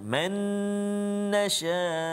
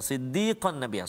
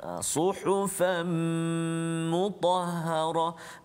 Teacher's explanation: Masukkan bunyi nun mati ataupun tanwin tersebut ke dalam huruf selepas dia. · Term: idgham ma'al ghunnah